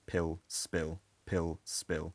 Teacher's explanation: The p in spill almost sounds a bit like a b sound because it's unaspirated.